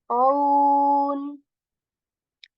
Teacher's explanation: Ain letter from the middle portion of our throat